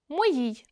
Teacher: наближення о до у перед наголошеним і